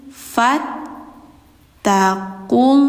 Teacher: Alifnya itu di tidak panjang langsung ke huruf tasdid.